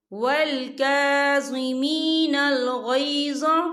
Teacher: वल का काफ के ऊपर खड़ी हरकत है, तो हम इसे 2 या 3 हरकत के बराबर खींचेंगे